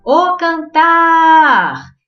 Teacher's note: Então, por exemplo, na palavra cantar, eu vou chamá-la o cantar. Então, o tar se intensificou. Então, a sílaba tônica é a última, oxítona.